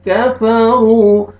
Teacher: کاف کو باریک پڑھیں گے, قو نہیں پڑھیں گے